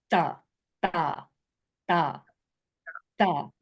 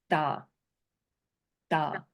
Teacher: sometimes it comes off like a d when I'm saying it and sometimes it comes off like a t and it is a sound that's in between between the two